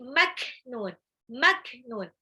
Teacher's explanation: ingat itu kaf sukun punya sifat syiddah, tertahannya suara. Jadi bukan maknun, tidak dipantulkan, tapi maknun.